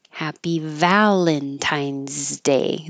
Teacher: The S sounds like a Z.